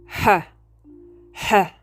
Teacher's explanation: Your h sound is called a glottal fricative, which means that the sound is produced in the glottis, which is the middle part of the larynx.